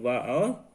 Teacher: दंतोष्ठ वर्ण, जो दांत और ओठ की सहायता से बोले जाते हैं